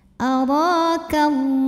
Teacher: Lam pada lafaz Allah atau lam jalalah dibunyikan secara tafkhim karena huruf sebelumnya berbaris fathah, maka cara bacanya adalah ditebalkan, pangkal lidah dinaikkan